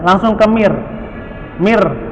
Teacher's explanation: kalau masuknya itu idgham bila gunnah, maka langsung ke mir